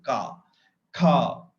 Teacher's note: So it has got its unvoiced part. The k sound is there, then followed by a vowel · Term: syllable